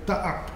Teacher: They are stretched monosyllables. The vowel has been stretched, has been geminated, and a glottal stop has been inserted in the middle.